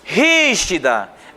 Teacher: Rígida é a antepenúltima sílaba tônica.